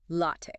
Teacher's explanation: Often mispronounced. Stress the first syllable. L a h. Get that clear a sound.